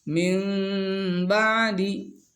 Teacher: Wa qalbun nuni sakinati wa tanwini miman mukhfatan fil lafzi. Ditukarkan ke huruf mim yang tersembunyi dalam lafadznya, dalam ucapannya, mim yang samar ya, jadi bukan mim asli. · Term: iqlab